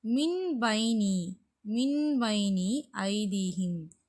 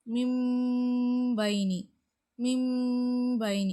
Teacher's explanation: சுக்குூன் செய்யப்பட்ட நூனுக்கு அடுத்து பா வந்திருக்கறதுனால மின்பைனி என்பதற்கு பதிலாக என்னது மிம்பைனி என்று குன்னாவுடன் ஓத வேண்டும் இதுதான் இக்லாபுடைய சட்டம்.